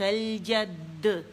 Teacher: قلقلہ تو ہے لیکن مشدد پہ ہے